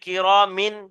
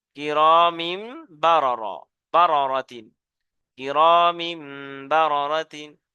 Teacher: তাহলে এটা খেয়াল রাখবেন যে তানবিন ও নুন সাকিনের পরে যদি হরফে বা আসে, তাহলে তানবিন ও নুন সাকিনকে মিম এর দ্বারাই পরিবর্তন করে একালি পরিমাণ গুণনা সহ পড়তে হবে, একে ইকলাব বলে